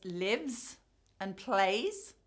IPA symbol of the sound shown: z